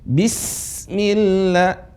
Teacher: Bismillah, tipis. Bis, tapi desisnya kuat. Karena dia punya namanya sifat sofir.